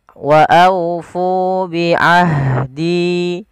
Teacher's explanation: Apabila ada huruf ha sukun, dia mempunyai sifat yaitu jaroyanun nafas atau hamas, dan juga ada sifat rokhawah, yaitu jaroyan nafas, mengalirnya nafas